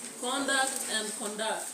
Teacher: For the nouns, you stress the first syllable, but for the verbs, you stress the second syllable.